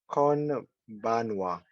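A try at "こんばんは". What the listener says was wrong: Yeah, nice. A little faster. Konbanwa.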